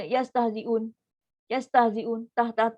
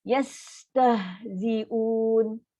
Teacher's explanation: Ha ada sifat rohawah. Rohawah ada udara, ada suara masih mengalir lagi, masih berjalan lagi bunyi dia.